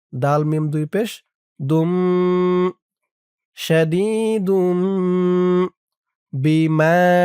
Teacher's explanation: দিয়ে এই দেখুন দালের পাশেই দালের উপরে ছোট্ট একটা মিম আছে, এই মিমকে ধরবে, এখানে ইকলাব গুন্না হবে